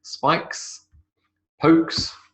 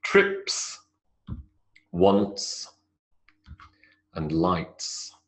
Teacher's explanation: the s sound, the unvoiced s sound